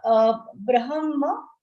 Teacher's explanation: when you say brahma, ha will be half, comes first and then ma.